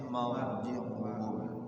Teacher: ra-nya dibaca tafkhim ya, jangan tipis